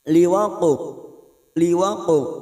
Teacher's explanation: Laisa liwaqa'u, huruf qaf sukun yang mati asli di tengah kalimat, namanya qalqalah sughroh. Cara memantulkannya dengan bibir kita yang seperti cemberut, ya, karena huruf qaf ini huruf isti'la, huruf tebal, maka bunyinya liwaqu, liwaqu.